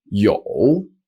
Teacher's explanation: is with a third tone and it's pronounced yo